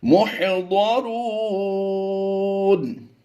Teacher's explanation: ضاد اور را کو ہم نے پر کر کے پڑھنا ہے. مح ہا کی ادائیگی واضح کر دیں گے.